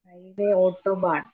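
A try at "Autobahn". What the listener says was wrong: ഓട്ടോബാൻ, ഓട്ടോ അല്ല കേട്ടോ. Pronunciation നമ്മൾ ശ്രദ്ധിക്കണം കേട്ടോ. ഔട്ടോ, ബി എം ഡബ്ല്യു അല്ല.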